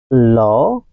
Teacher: ল উচ্চারণের সময় জিহ্বার দুপাশ দিয়ে বাতাস বেরিয়ে যায়